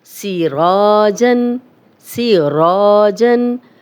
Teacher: اب را پہ زبر ہے تو را کو موٹا پڑھیں گے اور 2 حرکات لمبا بھی کریں گے، اس لیے کہ یہ الف مدہ ہے۔